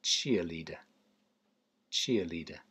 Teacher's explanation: there's two upside down e's there -- cheerleader, and they're not stressed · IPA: /ˈtʃɪəˌliː.də/